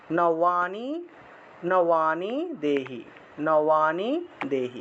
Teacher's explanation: নবানি আছে উচ্চারণ হবে নওয়ানি, নওয়া, বয়ের উচ্চারণটা হলো ওয়া